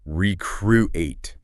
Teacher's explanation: You need to stress the second syllable. Recruit. Not recruiter.